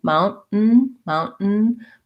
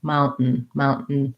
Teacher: do a very short end and then another short end so i'm going to close off with the t mount mountain but i'm just going to keep my tongue in that end position and make a little break between them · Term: stop t